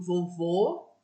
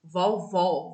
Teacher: Do vovô, a vogal está fechada. Ou vovó, vogal aberta.